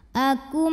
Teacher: nun sukun ini masuk ke mim Akum dan bunyi m nya tahan kurang lebih 2 harokat masuk disertai bunyi dengung Akum [Musik] ada hukum izhar syafawi karena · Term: Idgham Bighunnah